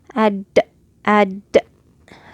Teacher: It has a stopping of air. And it has qalqala.